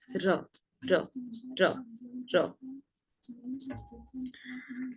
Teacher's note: র এর উচ্চারণটা হবে, জিভে যে অগ্রভাগ আছে সেই অগ্রভাগটা সামনের ওপরের পাটির দাঁতের গোড়ায় স্পর্শ করে উচ্চারিত হবে র, হালকা কম্পিত হবে